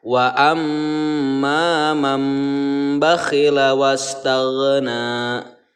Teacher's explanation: karena di sini nun mati bertemu dengan huruf ba, maka bunyi nun mati ini kita ganti menjadi mim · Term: iqlab